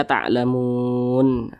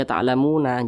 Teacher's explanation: Ini kita membaca Al-Quran tepat berhenti pada huruf nun. Huruf nun tidak dibaca panjang, maka huruf tersebut harus kita sukunkan, harus kita matikan